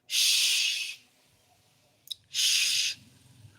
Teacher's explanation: So you have sh as voiceless palato-alveolar fricative.